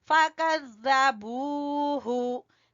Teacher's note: बू को खींचेंगे वाव मद्दा की वजह से और हु को नहीं खींचना